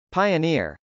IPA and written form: p.aɪənˈɪr (pioneer)